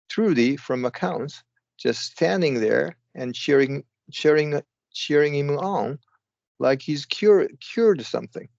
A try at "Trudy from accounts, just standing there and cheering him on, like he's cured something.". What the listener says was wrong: Perfect. Yes, that's